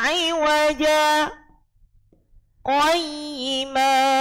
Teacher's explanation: berhenti sejenak sekitar 1 alif atau 2 ketukan tanpa bernafas. Jadi ditahan nggih, ditahan. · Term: bacaan sakta